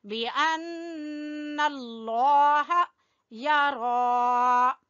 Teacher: लफ्ज अल्लाह को पुर पढ़ना है, मोटा पढ़ना है